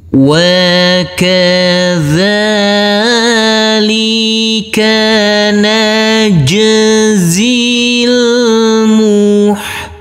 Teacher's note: Wa kadzalika najzil muhsinin. Huruf jim ini adalah bacaan qalqalah, harus kita pantulkan. Huruf zain yang berkasroh i ini langsung masuk ke huruf lam yang bersukun, maka huruf zain kita baca pendek.